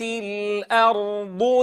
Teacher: ترقيق الهمزة وتفخيم الراء